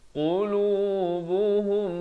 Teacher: mim mati bertemu mim kena baca dengan dengung 2 harakat. Namanya idgham mislain saghir.